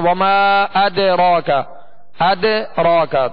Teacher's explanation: دال جو ہے وہ ساکن ہے، دال اس کے اوپر جزم ہے اور اس میں قلقلہ ہوگا